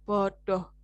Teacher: Bodohnya ini kan tidak O-nya tidak bulat ya, tapi seperti ada gabungan antara O dan A. O jadinya ya, bodoh dengan toko itu kan bulatnya beda. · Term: alofon